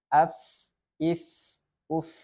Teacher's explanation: Ada aliran nafas ketika kita membacakan huruf fa. Sifat yang kedua pada huruf fa ini adalah rokhawah atau mengalirnya suara. Jadi selain mengalirnya nafas, juga ada aliran suara ketika kita membacakan huruf fa.